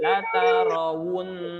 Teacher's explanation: Ro tidak monyong, ro tidak monyong, waw baru dimonyongkan. La tarawun, wun masuk ke hidung.